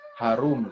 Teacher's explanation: harum itu dari pangkal tenggorokan.